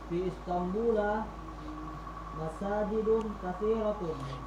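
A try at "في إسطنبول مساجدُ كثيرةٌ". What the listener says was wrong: Masajidun. Enggak tanwin. A-A-I-U. katsiratun. Enggak, tonnya tetap tanwin. Fi Istanbul masajidu katsiratun. Oh iya, mamnu' minas sharaf.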